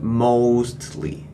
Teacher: he will start to speak with the first Cantonese tone and end with the fourth Cantonese tone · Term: Cantonese tones